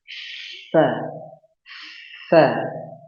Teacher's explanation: Fa itu posisinya berada pada ujung gigi seri bagian depan kita, ujungnya itu bertemu dengan bibir bawah bagian dalam. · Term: huruf fa